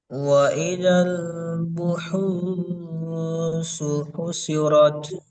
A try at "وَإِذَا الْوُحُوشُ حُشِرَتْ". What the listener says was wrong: আরেকবার বলেন, ওয়াওটা ওয়াওটা পরিষ্কার করেন। ওয়াইদাল উহুশু হুশিরাত হুশি আপনি হুশিন যে শি হুশিরাত।